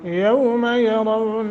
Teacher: वो साकिन माक़बल फ़तह है हरूफ लीन में से नरमी के साथ और 1 सेकंड की मद करके यरौन रा को पुर करना है।